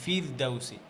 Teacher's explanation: যখন কাসরার পরে র সুকুন হবে তখন তো র পাতলা করছেন